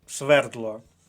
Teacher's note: свердло наголос на першому складі